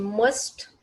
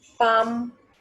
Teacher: M is also pronounced with the help of two lips.